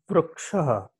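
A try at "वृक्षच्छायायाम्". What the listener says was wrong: But vrukshaha is There is no vrukshaha. Vruksha chayayam. Sarga is not there.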